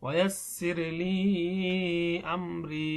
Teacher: দেখুন মাদের হরফ অর্থাৎ জেরের বাম পাশে যজমালা ইয়া, মাদের হরফের পরে একটি হরকত হামজা আসছে, এজন্য এখানে তিন আলিফ টান দিতে হবে।